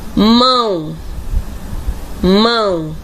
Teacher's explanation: Eu vejo a letrinha O, eu escrevo com a letrinha O, mas na pronúncia o som está como se fosse U. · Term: mudança fonética